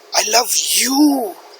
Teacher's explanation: now the stress is on you